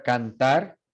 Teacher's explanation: Entonces, por ejemplo, en la palabra cantar, esa N, de hecho, no es una N alveolar, es una N dental. So that N is produced dentally with your tongue against your teeth, because the following consonant is a T.